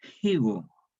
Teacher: se pierde esta F inicial y se reemplaza por una H aspirada, una fricativa aspirada sorda